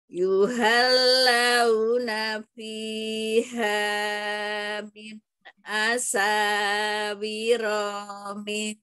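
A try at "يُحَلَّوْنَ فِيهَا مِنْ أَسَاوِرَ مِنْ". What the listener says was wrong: Ronya pendek, Om. Yuhallawna fiha min asawira min. asawira. Pihanya dua harokat saja. Yuhallawna fiha min asawira min. Pihanya dua saja, jangan enggak dibaca. Fiha.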